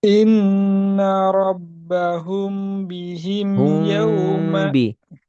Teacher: Ikhfa syafawi dengung dua harokat kasih celah.